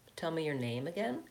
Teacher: So name is lengthened and stressed.